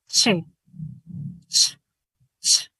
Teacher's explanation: Hay combinación de oclusión, fricción al mismo tiempo, con la misma fuerza.